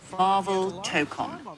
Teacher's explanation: pronounced Marvel Tokon. Emphasis on that first syllable.